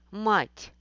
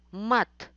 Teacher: Слово «мат» обозначает «defeat in chess game». Разница в том, что в первом слове стоит мягкий знак, и «т» читается мягко.